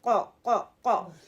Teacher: زبان کے پچھلے حصے کو تالو کے پچھلے حصے کی طرف بلند کرتے ہوئے یعنی کہ کوے والی جگہ پر لگاتے ہوئے موٹی آواز کو بنایا جاتا ہے. جب بھی آپ قا کہیں اپنے آپ کو امیجن کریں, دیکھیں کہاں پہ زبان لگ رہی ہے.